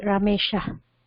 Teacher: ha visarga sound is to be pronounced like a whispering sound, and it should be very light